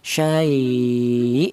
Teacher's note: Kalau yang di yang di dalil bacaan lin itu contohnya syai ya hamzahnya ditekan ya jadi wakaf pada hamzah yang di dalam huruf mad atau lin itu dibaca nabr yaitu hamzahnya dibaca ada penekanan suara